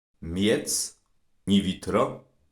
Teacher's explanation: Kaszubskie i to dźwięk pomiędzy i a y, jak w polskim słowie miska.